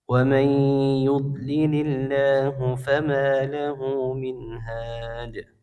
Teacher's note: Ya, Allahnya dibaca tipis karena sebelumnya kasrah